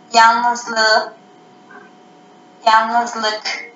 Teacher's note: Burada K'ler yumuşayarak yumuşak G'ye dönüşmüş. Ünsüz yumuşaması olmuş.